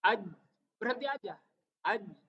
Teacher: Jadi jim itu tidak pecah, tidak aj. Nggak boleh ada suara mendesis, nggak boleh. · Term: jahar